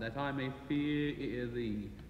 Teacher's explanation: you repeat the vowel sound, that I may fear ear thee. You sing it on a different ear sound.